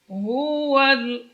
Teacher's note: Berbaris dhammah, huruf ha keluar dari pangkal tenggorokan, dari aksal halqi